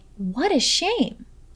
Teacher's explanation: make sure to emphasize the words what and shame